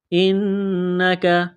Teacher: نون مشدد پر غنہ کریں گے، آواز ناک میں چھپائیں گے، کاف کو باریک کرنا ہے.